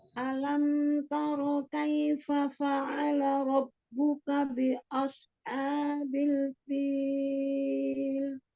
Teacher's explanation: Jadi bukan dengan menebalkan alif di huruf di huruf sebelum sodnya begitu ya. Sodnya tebal tapi tidak lantas membuat alifnya menjadi tebal.